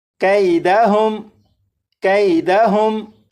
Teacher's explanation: अब यहाँ पर देखें, यहाँ पर ये यालीन है, इसलिए यहाँ पर इस काफ को बग़ैर खींचे पढ़ेंगे